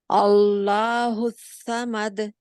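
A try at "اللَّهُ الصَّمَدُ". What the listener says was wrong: आ जो है वो बारीक है, हमजा हमजा मोटा नहीं होता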